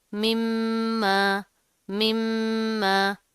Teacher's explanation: अब यहाँ पर क्या तनवीन है, उसके बाद हरूफ यरमलून में से मीम आ रहा है, ठीक है। और आगे फिर मीम है, उसके ऊपर तशदीद है, गुन्ना करेंगे, मजबूती से जमा कर पढ़ेंगे